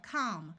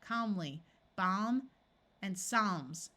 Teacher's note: The A will have its broad sound of ah, and the L will be silent.